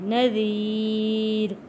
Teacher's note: یہاں پہ ہم را کو موٹا نہیں پڑھیں گے کیونکہ یہاں پہ زیر ہے